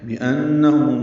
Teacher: بأنہم مشدد پہ غنہ ہے، ہم میم ساکن پہ اظہار شفوی.